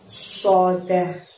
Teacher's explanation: so di sini lidah kita arahkan ke depan gigi seri kita, jadi seolah-olah kita seperti kalau mau mengeluarkan suara bersiul ya.